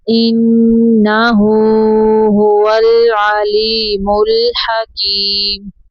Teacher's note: انہ الٹا پیش ہو کو 2 سیکنڈ تک لمبا کرنا ہے